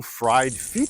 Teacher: that the Thai language has no final s or sh sound a final s or sh sound in English is usually substituted with a t Sound by Thai people